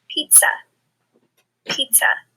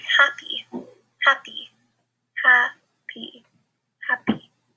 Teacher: the schwa sound when we have an unstressed syllable or when you don't usually say as loud sometimes it makes